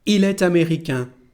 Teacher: we have here a liaison between these two words, and we pronounce it t'américain.